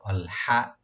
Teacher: আল হামজা, প্রথম যেটা হামজাটা আছে, হামজাটাকে স্পষ্টভাবে আপনারা ইউজ করবেন, পারফর্ম করবেন গলা শেষ থেকে। আল হা যেটা আছে, এখানে হা, ওইটা গলা মাঝখান থেকে হা, আল হা। অনেকে বলে আল হামদু, মানে হাটাকে হাওয়া গলা শেষ থেকে নিয়ে আসি, কিন্তু চেষ্টা করবো আল হা, মানে মুখটাকে একটু ভার্টিক্যাল করে আল হা, এভাবে আল হামদু।